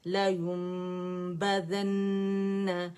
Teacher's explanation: اکمل grade کا غنہ ہے